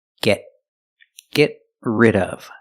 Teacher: We see the T in get is a stop T.